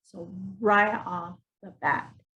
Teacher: we're putting the stress on the word bat.